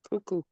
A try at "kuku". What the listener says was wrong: It's kuku, not choo-choo. Kuku.